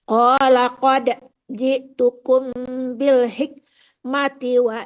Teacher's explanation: Qala qad dipantulkan dengan ringan.